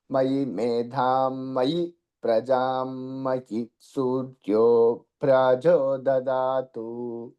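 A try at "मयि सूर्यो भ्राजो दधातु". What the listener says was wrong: దధాతు ఇంకా లేదండి. మయి మయి సూర్య భ్రాజో దధాతు. మధ్యకి చెప్పాలి స్వరితం.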